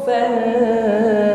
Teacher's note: ketika bertasydid sifat syiddah pada huruf ta di sini muncul ya, inhibasul jarayanus shaut sehingga tertahan aliran huruf ketika kita mengucapkannya.